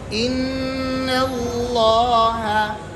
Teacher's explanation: نون کو جب لفظ اللہ کے ساتھ ملائیں گے تو لام پہلے سے موٹا پڑھیں گے لام کیا کریں گے ان اللہ سمجھا اور ہونٹ نہیں گول